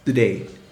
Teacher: Reduction here means that T is reduced to a D. This is fairly common in words that are accentuated on the second syllable. · in connected speech today is often pronounced duh-day (with a d sound) instead of TOday (with a T)